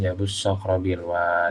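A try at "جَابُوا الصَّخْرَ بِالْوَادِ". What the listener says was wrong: Masih pendek, antum baca ja-nya.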